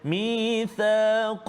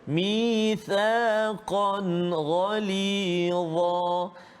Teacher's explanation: Izhar halqi, jelaskan bacaan kita, tak boleh dengung.